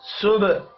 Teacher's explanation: با ساکن پر قلقلہ کریں گے. حا کے اوپر کھڑی زبر ہے، ایک الف کے برابر کھینچ کر پڑھنا ہے.